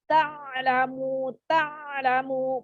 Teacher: Ain sukun, ain mahroji dari tengah tenggorokan.